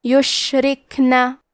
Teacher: را کے نیچے زیر ہے تو یہاں را کا حکم ہے ترقیق، لہذا ہمیں حرف را کو پتلی آواز میں پڑھنا ہے. کیونکہ یہاں کاف ساکن ہے اور کاف بھی حروف الہمزہ میں سے ہے تو ہم کاف کو ایسے پڑھیں گے یشرکنا.